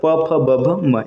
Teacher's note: प वर्ग का उच्चारण स्थान होता है उष्ट